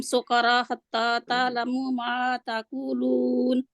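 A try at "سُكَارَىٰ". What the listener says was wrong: سکارا را موٹا بھی رہے گا اور را بھی لمبا ہوگا۔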